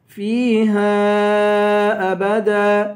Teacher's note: فیہا کے بعد جو الف ہے اس الف کو 5 الف کی مقدار کھینچ کے پڑھیں گے